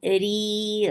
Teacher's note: B for kasra, give e sound. Ri, ra is light and make it two counts long